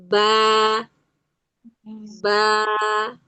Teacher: Waktu dia berbaris fathah, kondisi bibir dan rahang itu bergerak menjauh.